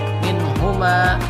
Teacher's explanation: hukumnya adalah ijhar halqi, dibaca jelas, nun mati bertemu ha